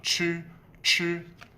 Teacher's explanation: Make sure when you say the ch, you have the friction between your upper oral cavity and your tongue